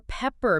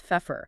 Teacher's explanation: the softer P sounds transformed into sharper PF or F sounds.